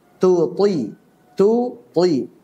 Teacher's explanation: Jadi tu ada hamasnya, toi tanpa hamas. Tu toi. Jangan sampai tu ti semuanya ada hamasnya atau tu toi semuanya jahar.